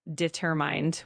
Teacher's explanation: determined with the emphasis on the second syllable